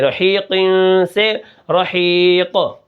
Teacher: زیر قن، قاف کو ہم موٹا کر کے پڑھیں گے، اور آخر میں جو نون کی آواز پیدا ہوگی اس کو نون تنوین کہتے ہیں، جب ہم وقف کریں گے تو یہ آواز پیدا نہیں ہوگی